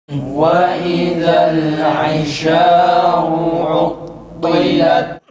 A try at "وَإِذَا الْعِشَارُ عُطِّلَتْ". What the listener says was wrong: Aynın harekesinin fetha mı esre mi olduğu tam belli değil. Buna dikkat edelim.